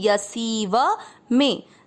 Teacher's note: य में आ मिक्स करेंगे, य। सी की मात्रा बड़ी लंबा खींचेंगे और व में आ मिक्स करेंगे, यसीव में।